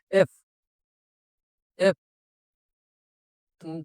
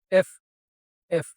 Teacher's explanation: এফ যখন উচ্চারণ করতে যাই তখন মুখ থেকে দুই ঠোঁটের মাঝখান থেকে বাতাস বের হবে হালকা করে।